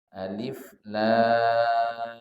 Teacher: Lam ini panjangnya 6 harokat saja. Tak lebih panjang dari 6 harokat. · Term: mad lazim harfi musaqqal